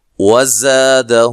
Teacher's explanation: اچھا، یہاں کاف کو باریک پڑھنا ہے، زا کو زور سے، یعنی کہ زور کی زا کی طرح سیٹی سے ادا کرنا ہے